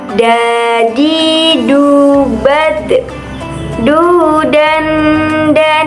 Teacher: Dalam melafalkan huruf da ini, kita harus menyentuhkan ujung lidah kita ke gusi bagian atas. Dalam keadaan mati, huruf da terdengar suaranya memantul